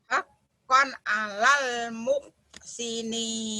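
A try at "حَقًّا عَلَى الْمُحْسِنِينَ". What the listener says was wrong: Bagus. Mohnya ketinggalan. Moh. Hakon alal moh. Muhammad Ali. Moh. Haqqan 'alal muhsinin.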